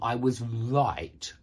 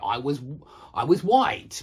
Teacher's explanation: so many people don't make the r sound but they just make the W sound instead